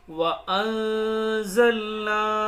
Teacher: یہاں پر غنہ کریں گے، اخفا ہوگا، نون ساکن کے بعد زا رہا ہے، حروف اخفا کے 15 حروفوں میں سے۔